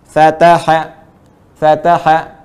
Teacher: Ya, tetap walaupun ini satu, tidak ada yang panjang, tetap seirama antara baca fa, ta dengan ha, itu ukurannya sama